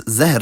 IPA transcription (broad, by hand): zæhr